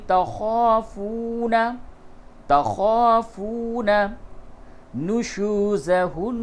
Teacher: نون مشدد ہے، یہاں پہ غنہ کیجیے